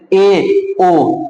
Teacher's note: अर्ध संवृत्त में ए, ओ अर्ध संवृत्त स्वर है